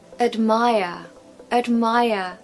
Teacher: We haven't got a strong vowel sound in that first syllable because the second syllable is stressed. And the rule goes that the schwa sound falls on the syllable that is unstressed.